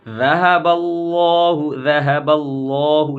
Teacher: لفظ اللہ کے لام کو پر پڑھیں گے